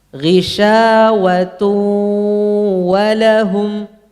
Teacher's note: Waw yang pertama itu pakai gunnah. Waw yang kedua tidak ada.